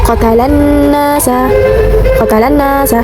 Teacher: Cara bacanya huruf lam dimasukkan ke huruf nun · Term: alif lam syamsiah